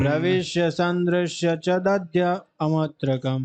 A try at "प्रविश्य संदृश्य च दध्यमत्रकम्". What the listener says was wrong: नहीं आएगा, आ नहीं बोलिए, उसमें हलंत लगा हुआ है। प्रविश्य संदृश्य च दध्यमत्रकम्।